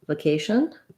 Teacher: you either can use a schwa here, vacation, or you will hear people use a short but still clear A, vacation.